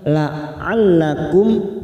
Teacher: mim sukun Idhar syafawi kita baca jelas